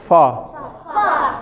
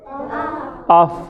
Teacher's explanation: اوپر کے دونوں دانت نیچے کے ہونٹوں سے لگتے ہیں، نیچے والے ہونٹوں سے، یا نیچے ہونٹوں سے لگتے ہیں، نیچے ہونٹ سے لگتے ہیں، ہونٹوں سے نہیں.